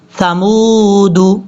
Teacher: یہ واو مدہ ہے، اس کو لمبا کریں گے 1 الف کی مقدار یعنی 2 سیکنڈز کے قریب